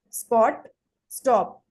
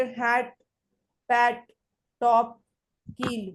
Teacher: such sounds are not aspirated at the end of the words or in the combination with certain consonants.